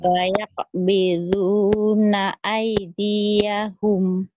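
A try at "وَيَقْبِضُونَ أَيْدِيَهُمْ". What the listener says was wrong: i-nya pendek. Di-nya pendek lagi. Wayaq biduna aydiyahum.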